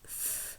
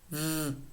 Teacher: First, the voiceless labiodental fricative f, and then the voiced labiodental fricative v